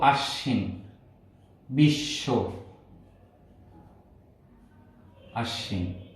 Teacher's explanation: এই ব ফলার উচ্চারণ হয় না